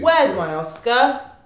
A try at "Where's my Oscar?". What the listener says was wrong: No, you sound too angry. Where's my Oscar? Where's my Oscar?